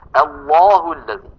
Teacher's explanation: متى تفخمها سيأتي معنا هذا إن شاء الله في الأبيات، ولكن من الآن نقول أن العرب تفخم اللام في لفظ الجلالة، كلمة الله. كل القبائل العربية بإجماع تفخم اللام من لفظ الجلالة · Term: مفخمة